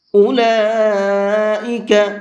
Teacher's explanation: لام کے اوپر بڑا مد ہے تو اس کو 4 سے 5 الف کے برابر کھینچ کر کے پڑھیں گے